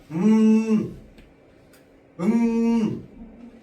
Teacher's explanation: 이응이랑 미음은요. 어디에서 나는 소리다? 코안을 울리는 소리입니다.